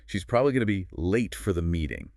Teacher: Okay, listening for the stress. Probably, late, meeting. Those pop out.